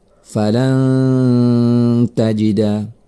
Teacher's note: Maka ini adalah ikhfa. Cara membacanya adalah dengan mendengungkannya selama 2 harokat.